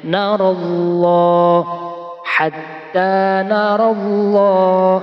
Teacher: pada lafaz Allah ini lamnya dibaca panjang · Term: lam jalala tafhim